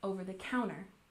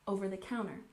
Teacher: We stress the fourth syllable, over the counter, and we usually smush these words together